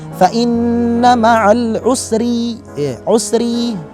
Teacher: Adapun di kalimat al-usri, ro-nya di sini berupa ro yang tipis. Kenapa? Karena harokat ro tersebut berupa harokat kasroh.